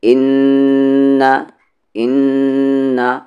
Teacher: نون پر تشدید ہے، غنہ ہوگا، آواز کو ناک میں رکھیں گے